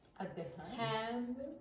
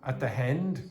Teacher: the typical Italian mistake of putting in a h sound